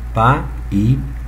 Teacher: Ao invés de transformar num ditongo, a gente retira aquele ditongo e transforma num hiato. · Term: falso hiato